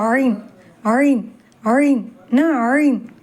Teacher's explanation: இதை நடுத்தொண்டையில்ிருந்து தொண்டையை நெருக்கிய வண்ணம் உச்சரிக்க வேண்டும்